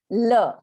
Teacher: La is from the back of the teeth, so it's dental.